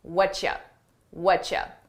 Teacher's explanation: What are you becomes what ya? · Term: connected phrase